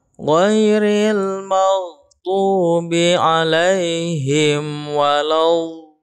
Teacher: Ini ada mad lazim mutsaqal qilmi, ya, mad lazim mutsaqal qilmi, panjangnya 6 harokat. Dha-nya yang 6 harokat, kemudian setelah akan habis madnya langsung tasdidkan ke huruf lam, ya. Jadi bukan l-nya yang panjang tapi dha-nya. · huruf dha ini makhrajnya, ya, masih ingat di pembahasan makharijul huruf, ya, adalah sisi lidah kiri atau kanan, ya, menyentuh geraham atas, ya, geraham atas kiri dan kanan.